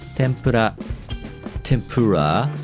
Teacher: japanese people pronounce all letters of it with the same length of time and the same pitch